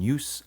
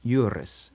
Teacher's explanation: the s gets rhoticized into an r because it's in between two vowels, like how the Latin jus, law, becomes juris in the genitive.